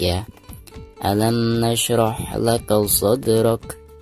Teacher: huruf Dal yang berharga tekun sekaligus posisinya ada di tengah-tengah bacaan maka dihukumi Qolqolah Sugro dan cara membacanya harus di pantulkan dengan suara pantulan yang tipis